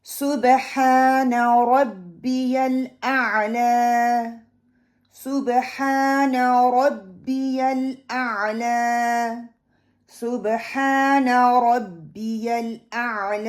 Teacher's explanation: صبح با کلکلا ہے، ہا ایری ہا ہے، middle part of my throat سے نکلے گا مخرج، را کو موٹا پڑھوں گی، اینڈ الاعلی لام کو بھی پکڑوں گی کیونکہ توسط لیٹر ہے، عین کو بھی پکڑوں گی توسط لیٹر ہے، لا کو میں 2 کاؤنٹ لمبا کریں گے انشاءاللہ۔